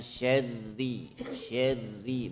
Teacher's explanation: Huruf ra itu adalah salah satu huruf bainiyah atau huruf tawassut, maka dia sedikit mengalir